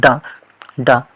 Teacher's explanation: दांत का जो पिछला हिस्सा होता है जिसको जीभ स्पर्श करती है, वो मूर्धन्य कहलाता है